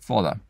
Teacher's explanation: where the ah becomes an o